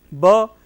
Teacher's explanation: it is voiced, bilabial, plosive